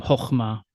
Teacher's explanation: The long a often shifts to an o sound, so you'll encounter something called the qametz hatuf in some readings of biblical Hebrew, where this closed unaccented syllable of a qametz makes an o sound